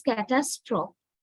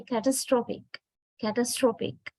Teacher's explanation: But when we change the word into an adjective, you can see not the second syllable, it is the third syllable that is stressed